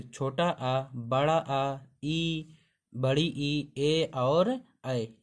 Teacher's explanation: जिन वर्णों को बोलते समय होंठ गोलाकार ना हो तो उसे आवृत्तमुखी वर्ण कहते हैं